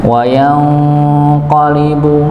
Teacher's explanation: di situ ada nun sukun ketemu dengan huruf qaf. Ya, maka dibaca samar.